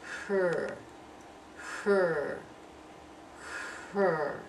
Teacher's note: The corners are drawn in a little bit. As the corners are drawn in, the tongue is standing up, and the tip of the tongue is turned back just a little bit. · Can you feel that tongue standing up and the tip just curling back a little bit?